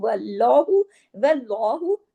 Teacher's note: अब देखिए अल्लाह के नाम से पहले फिर जबर है तो इसको हमने लाम को हैवी किया